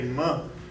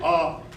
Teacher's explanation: when you say month the air flows through the nose when we say off it flows through the mouth